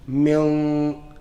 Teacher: my tongue is actually away from the makhraj of noon. So the sound is there, it doesn't actually touch. Yeah? So you're allowing the air to come through the mouth. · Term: ikhfa